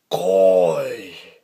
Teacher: And this is kind of rising, falling sort of tone. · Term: third tone